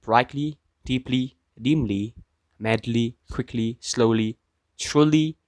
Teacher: We can see here that the stress does not shift when the suffix is added to the monosyllabic adjective from which the adverb is derived. The stress pattern of these adverbs is the basic trochaic pattern of English bisyllabic words, or stress on the penultimate syllable. The primary stress remains where it was in adjective.